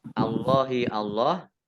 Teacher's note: Allahnya dibaca tebal karena harokat di depannya fathah. Lam fathah berdiri mat tabi'i ya, panjang 2 harokat.